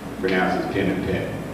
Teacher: Here, and I'll explain to you, where it says the F-lax, the front lax, that's a merger of words like pin and pen